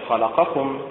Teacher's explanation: ينطقها أهل القاهرة في مصر هكذا خلقكم بالنبر على حركة الخاء